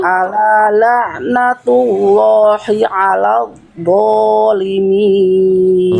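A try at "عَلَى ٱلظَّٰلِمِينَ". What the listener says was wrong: Zo jangan mampet bunyinya, ngalir.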